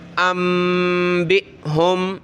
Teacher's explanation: حمزہ ساکنہ پہ ہمیشہ جھٹکا ہوتا ہے